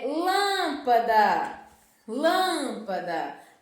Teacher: lã é a sílaba mais forte da palavra lâmpada. Então ela está aí no local da antepenúltima sílaba. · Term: palavra proparoxítona